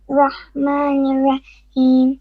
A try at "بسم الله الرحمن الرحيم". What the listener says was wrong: No, you're pausing and you said Rahmani. There's too many pauses. Okay? Try to read it with one breath.